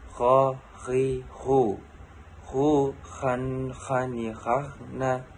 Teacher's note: Melafalkan huruf gho, huruf ini keluar dari tenggorokan yang terdekat dari rongga mulut. Diucapkan dengan lembut suaranya tanpa mengalir udaranya.